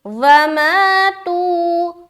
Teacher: کفروا کفروا، آگے وماتوا، واو زبر وا، میم الف زبر ما، تا واو پیش تو یہاں پر دیکھیں دونوں جگہ کھینچنا ہے اور کھینچنے کی مقدار برابر ہوگی، پہلے میں ہم الف مدہ کر رہے ہیں اور دوسرا میں ہم واو مدہ کر رہے ہیں